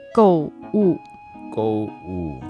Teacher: Go is the fourth tone. Wu is also the fourth tone.